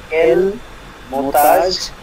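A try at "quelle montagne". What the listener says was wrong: না কেল মোন্তাজ না কেল মুনতাইন জিএন লাস্টে থাকলে ন সাউন্ড হবে রাইট কেল মুনতাইন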